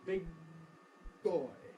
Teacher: Before I can release the g, my lips have come together for the b. Big boy. So the back of my tongue makes contact with the soft palate for the g, velar consonant.